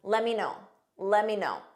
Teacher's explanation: In spoken English, let me becomes lemmy.